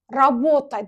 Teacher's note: Amma baxın mən rabota sözündə t-nı qalın tələffüz edirəm. Robota deyirəm.